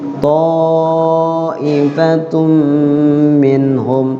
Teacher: ta'ifatun ada tanwin ketemu mim, idgham bi gunna. Minhum nun mati ketemu ha, idhar.